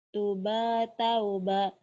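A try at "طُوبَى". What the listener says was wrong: Tuhnya kan panjang, Matobi. Pasangan. Kenapa banyak panjang? Ayo, banyak pendek.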